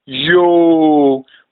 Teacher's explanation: pronounced by elongating the O sound